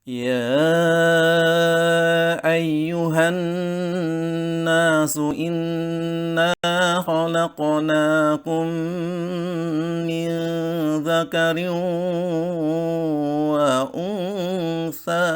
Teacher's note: nada yang pertama dengan ciri awal datar akhir tinggi